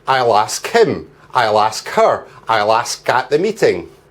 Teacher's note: But when we speak, we don't say, I will ask him, I will ask her, I will ask at the meeting. Because the next words have vowel sounds, we can join the final sound of ask onto the next word, if it's a vowel sound.